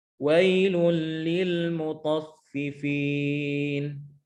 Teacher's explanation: keluar dari perut bibir bawah bertemu dengan gigi seri atas